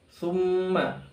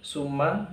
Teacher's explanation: huruf ta tipis, jangan ketebalan menjadi huruf sin. Summa itu salah, tapi su ya tipis.